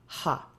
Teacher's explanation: And then for the throat, ha. Notice it's not ah, it's not a glottal stop, ha.